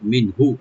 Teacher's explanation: নুন সাকিন এখানে জাহার করবে, এখানে গুণা হবে না, আর হাতে টান না, হাতে টান নাই, মিনহু।